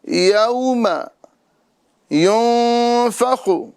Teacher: یوم یہاں پر واو لین ہو رہا ہے، لہذا اس کو کھینچیں گے نہیں، بغیر کھینچے پڑھیں گے